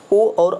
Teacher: ओ और औ की बात कर रहे हैं भाई, किस प्रकार के ये वर्ण के अंतर्गत आते हैं। तो देखिए ओ और औ जो है आपका यहाँ पे कंठ और ओष्ठ, मतलब कंठ से भी हम बोलते हैं और ओठ से